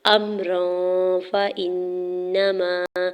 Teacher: امران، حمزہ کے زبر کو میم ساکن کے ساتھ ملاتے ہوئے پڑھیں گے، را کے اوپر دو زبر کی تنوین اور اگلا حرف فا حروف اخفا میں سے ہے تو را کے دو زبر کی تنوین پر اخفا کریں گے، یعنی آواز کو ناک میں چھپا کے پڑھیں گے